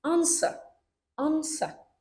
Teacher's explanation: Mana bu yerda masalan answer, answer birinchi bo'g'inga urg'u tushyapti.